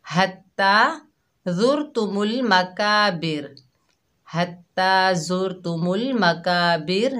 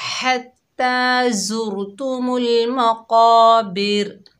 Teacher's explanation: ہا کو حلق سے ادا کریں گے، کھڑا زبر کو بھی صحیح پڑھیں گے اور قاف کو موٹا پڑھیں گے۔